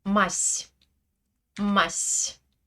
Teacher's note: Le son que je prononce est un S mouillé.